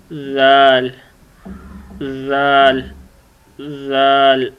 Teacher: جب آپ کی زبان کی نوک آگے والے اوپر والے جو دانت ہیں ان کی نوک سے ٹکرائے تو یہ لفظ ادا ہوتا ہے زال